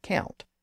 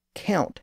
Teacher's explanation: count had lost the MP sound in the middle